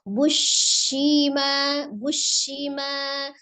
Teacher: Ada huruf shin sifatnya adalah tafasi ya. Jadi ditasdidkan kemudian dia suaranya nafasnya menyebar ya